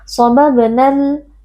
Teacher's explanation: Sobabnal alif lam al-qamariyah karena alif lam bertemu dengan salah satu huruf qamariyah yaitu huruf mim, alif lam sukun dibaca dengan izhar atau dengan jelas